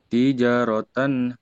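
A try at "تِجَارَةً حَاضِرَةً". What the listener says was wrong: Ya-nya panjang. Ya-nya panjang. Tapi nggak boleh putus. Tijaratan hadiratan.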